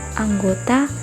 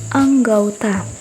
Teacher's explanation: Perubahan bunyi ini terjadi pada bunyi vokal tunggal O ke vokal rangkap AU. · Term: diftongisasi